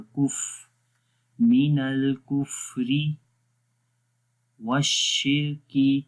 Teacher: فا کے اندر سانس جاری رہے گا